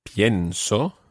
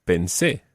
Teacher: The stress on the present tense is on the IE, and the stress when it's in the preterite is on the last syllable.